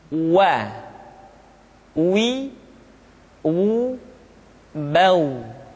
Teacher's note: huruf wa diucapkan dengan cara memonyongkan dua bibir kita